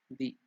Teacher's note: Di is not Mahaprana. Di is Alpaprana.